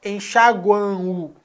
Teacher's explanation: esse m é o nasalizador da vogal A e termina com som de u